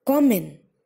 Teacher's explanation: So it is first syllable that is being stressed upon.